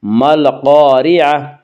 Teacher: گول تا وقف کی صورت میں ہائے ساکنہ بن جاتی ہے